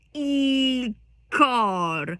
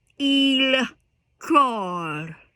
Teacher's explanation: The L is nearly silent.